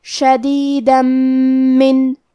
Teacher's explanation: کلمت شدیدہ میں آخری میں دال پہ تنوین زبر ہے، پھر حرف المیم آتا ہے کلمت من، میم حروف الادغام بغنہ میں سے ہے، تو ہم تنوین کو میم میں ملا کے غنہ اور تشدید کے ساتھ یہ حکم کو ادا کریں گے